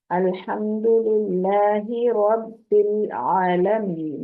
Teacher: رب کرتے ہوئے لام پہ قلقلہ نہیں ہونا چاہیے، رب العالمین نہیں بولنا، رب لام کو پکڑ کے رکھیں گے، ٹھیک ہے۔